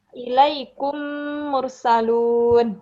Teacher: itu didengungkan karena dia mim mati bertemu dengan mim